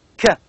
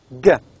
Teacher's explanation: k is velar, stop, voiceless sound, and g is velar, stop, voice sound.